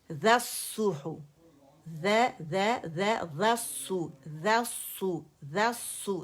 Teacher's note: ذال باریک ہے، غا کر کے نہیں پڑھیں گے